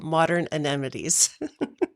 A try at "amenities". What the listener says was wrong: Amenities? It almost sounds like you're saying amity, and I immediately think of Jaws.